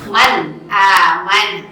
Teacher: Idhar artinya jelas. Begitu ketika diucapkan tidak boleh disertai dengan dengung, tidak boleh digunakan, tidak boleh ditahan, tapi harus jelas nun matinya, jelas tanwinnya, dan langsung dibacanya, ya, seperti tadi contohnya.